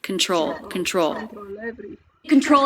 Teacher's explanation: control stress on the second syllable · Stress on the second syllable. TR cluster is often pronounced as CHR, and I do hear this lightly as a CH rather than a T sound.